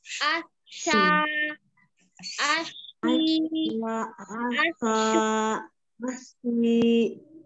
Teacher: Tengah lidah sin. Menyentuh ke langit-langit yang tengah. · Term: Shin